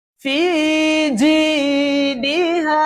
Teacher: জিমের মধ্যে বাতাস বন্ধ হয়ে যেতে হবে। জিম উচ্চারণ করার সময় যা থাকবে সেটা হচ্ছে আওয়াজ। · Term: হুরুফে মাজহুরের